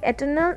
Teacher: These are the words like eternal in which the stress falls in the middle, on the middle syllable. Such are called the amphibrachic foot.